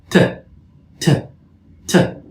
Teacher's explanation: these are sounds pronounced by the tongue close to or touching the teeth ridge